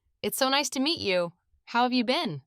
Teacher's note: Notice the natural pause after meet you. It's subtle but important for fluency.